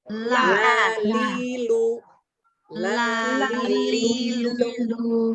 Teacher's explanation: lam ujung lidahnya nempel di langit-langit atas, di belakang gigi seri atas